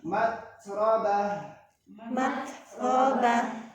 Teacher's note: Tahan dulu syiddah huruf ta. Ucapkan huruf ro.